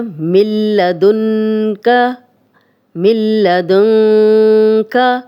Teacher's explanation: دن کا یہ نون ساکن اور آگے کاف آ گیا تو یہاں ہم غنہ کر رہے ہیں اور یہ اکفا والا غنہ ہو رہا ہے یہاں پہ، لیکن نون ساکن کے بعد جب لام آئے گا تو یہ ادغام ہو گیا مل، میم زیلہ مل، میم اور لام مل رہے ہیں، ادغام ہو رہا ہے لیکن غنہ کے بغیر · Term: ادغام بلا غنہ